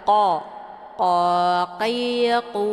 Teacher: Kemudian qa-nya dibaca tebal, dia tempat keluarnya dari pangkal lidah dekat dengan anak tekak. Jadi saat melafadzkan huruf qaf ini, pangkal lidahnya menempel di langit yang lunak. Jadi dekat dengan anak tekak.